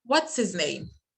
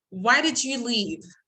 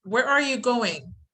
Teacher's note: Falling intonation is also used when making questions if they contain question words such as where, what, why, when, how, and who.